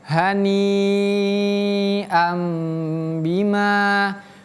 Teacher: H-nya H besar. Kemudian ni-ya panjang. · Perhatikan pemirsa, hanya H besar, kemudian ni-nya panjang. Haninya panjang, lihat ada garis melintang seperti ini di atasnya.